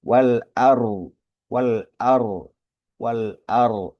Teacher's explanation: Huruf ro sukun ini hukumnya jadi tebal ya.